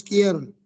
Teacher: Aquí en quier no suena la U, pero suena la I y la E